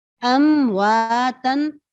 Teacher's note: تو میم ساکن کو واضح کر کے ظاہر کر کے زیادہ ظاہر کر کے پڑھیں گے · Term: اشد الاظہار